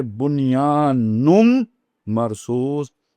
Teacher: نون کے بعد جب میم آ گئی تو نون کا ادغام ہو جائے گا میم کے اندر، تو اب یہ بن گیا نون میم میں بدل گیا، تو جو دوسرا نون تھا، پہلا نون نہیں، جو دوسرا نون تھا وہ میم میں بدل گیا، تو اب آپ اسے پڑھیں گے بنیان مرصوص۔